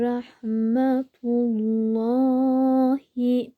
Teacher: buradaki lamı kalın okuyoruz neden önceki harfimiz harekesi ötü olursa kalın okunur